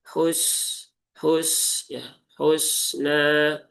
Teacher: Kemudian sin ya, sin sukun. Sin itu punya sifat salah satunya adalah rakhawah ya. Rakhawah atau mengalir ya.